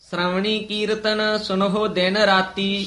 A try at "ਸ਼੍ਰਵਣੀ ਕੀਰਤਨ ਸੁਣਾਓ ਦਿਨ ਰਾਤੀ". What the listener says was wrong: ਸੁਣਹੋ ਹਾਹਾ ਨੀ ਹੈ ਸੁਣਾਓ ਸ਼੍ਰਵਣੀ ਕੀਰਤਨ ਸੁਣਾਓ ਦਿਨ ਰਾਤੀ